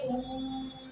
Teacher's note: दीर्घ स्वर से भी ज्यादा समय जिसमें लगता है उसे हम प्लुत स्वर कहते हैं। कहने का मतलब है ह्रस्व स्वर में अगर 1 मिनट का समय लगता है तो दीर्घ स्वर में 2 मिनट का समय लगता है, तो प्लुत स्वर में 3 मिनट का समय लगता है।